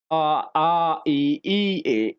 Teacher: वे स्वर जिनके उच्चारण में ओठ गोल ना हो के फैले रहते हैं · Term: आवृत्ताकार